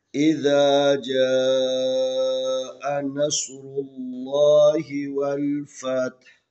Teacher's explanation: اس سے پہلے را کے اوپر پیش ہے تو لفظ اللہ کو جب پڑھیں گے تو تفخیم پڑھیں گے، موٹا پڑھیں گے۔